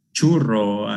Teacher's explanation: that post-alveolar affricate sound in the word churro